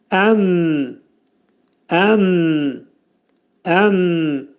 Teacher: Mim hərfi Azərbaycan dilindəki olan mi, m səsi kimi deyilir və ərəb dilində biz bunu ifadə edəndə mim hərfini deyib ağzımızı mütləq yummalıyıq ki, hərfdə qəlqələ xüsusiyyətləri olmasın. Əm, əm, əm şəklində deyib məxrəcini çıxarırıq.